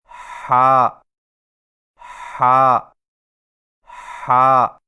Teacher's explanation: ہا کی ادائیگی میں زبان کی جڑ کو حلق کی طرف مضبوطی سے دباتے ہوئے باریک اور رگڑ کھاتی سانس میں پڑھیں، یعنی ہا ہا ہا۔